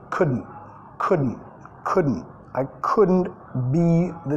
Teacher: Acá el couldn't, vamos a comer la L